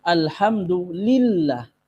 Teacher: ketika lafdzul jalalah, lafadz Allah diawali oleh kasrah, lillah, nillah, maka ini dibaca tarqiq tipis. Alhamdulillah, ini tipis, bukan Allah.